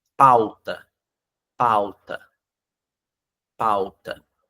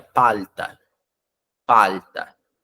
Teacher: nós brasileiros a gente arredonda a nossa boca e a gente faz o som de u pauta pauta pauta um uma pessoa que fala espanhol falaria palta